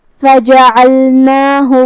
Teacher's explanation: کلمت فجعلناہ میں یہاں لام ساکن ہے، لہذا ہم حرف اللام کو ظاہر کریں گے. پھر نون پہ کھڑا زبر ہے تو یہاں مد الف ہوا، ہم اپنی آواز 2 مد کے برابر لمبی کریں گے